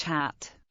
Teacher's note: H. Voiceless glottal transition, as in English hat.